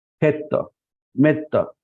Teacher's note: double consonant आया है ए के आगे, इसलिए हम उसको शॉर्ट में करते हैं